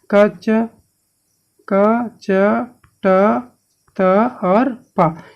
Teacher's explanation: इस प्रकार से होता है कंठ, तालु, मूर्धा, दंत और ओष्ठ